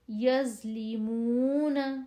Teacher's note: زو کی آواز موٹی اور نرم